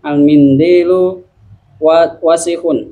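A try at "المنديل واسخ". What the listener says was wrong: Nah, pendek, benar.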